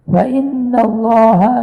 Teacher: nun sabtu wajibul gunnah, Allah dibaca dengan tebal